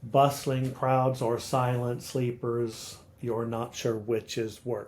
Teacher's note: so it's rhythmical along an iambic meter